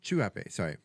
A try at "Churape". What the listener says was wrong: It's a CH, not an SH. A little bit, because it's just a single R.